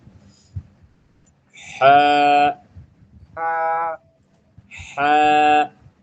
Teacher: এটা একটু হলকের ভেতর থেকে আওয়াজ হবে, একটু গলার মধ্যে দাব দিয়ে